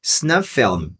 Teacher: Como tem um monte de F, vou pronunciar só um, né?